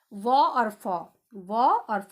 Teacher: ये दांत और ओंठ है, इनका उच्चारण स्थान